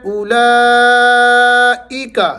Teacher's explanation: فی الارض، فی الارض، اولئک، اس کو او نہیں پڑھنا، او پڑھنا ہے۔ اولئک، لا کو آپ نے لمبا کرنا ہے، بڑی مد ہے، لمبا کرنے کی علامت ہے۔